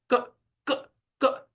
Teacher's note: इसलिए सिर्फ क का हम उच्चारण नहीं कर पाते। हमने कितना भी छोटा उच्चारण करने का प्रयत्न किया, क क क, तो भी थोड़ा सा अ उसके साथ आ ही जाता है, क्योंकि जिह्वा वहां से स्पर्श हटा कि क का नाश हो गया।